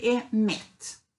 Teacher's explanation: Och så den första är ju reducerad. Så det är ett schwa egentligen.